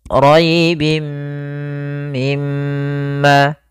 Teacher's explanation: Pada lafal rbi, pada lafal rinya di sini ada ro tafhim, ro tebal, yaitu ro yang berharakat fathah